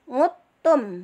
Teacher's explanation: Nah, wa in uttum ya, wa in uttum itu dibaca secara idgham mutajanisain, yang satu rumah beda sifat ya, itu wa id nguttum, ngudtum. Kalau yang secara tulisan adalah ngudtum, tapi secara bacaan idgham kita baca nguttum